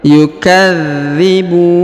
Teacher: huruf dha ditahan dan ditekan karena terdapat tanda tasdid. Yukadzibun, kemudian huruf bu dipanjangkan boleh 2, boleh 4, boleh 6 harokat karena di depan huruf bu terdapat waw sukun sebelum huruf pemberhentian, dan huruf pemberhentian huruf na disukunkan atau dimatikan.